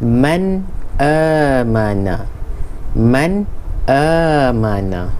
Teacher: Izhar halqi ni maksudnya zahir pada halqum ataupun tekak ni. Jadi bacaan dia jelas tanpa dengung. · Jadi bunyi dia jelas. Man, nun lidah ni lekat pada langit tu.